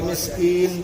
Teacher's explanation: علی طعام المسکین. اب یہاں پر جب آپ نون کو ادا کریں گے مسکین تو یہاں پر ناک میں آواز جائے گی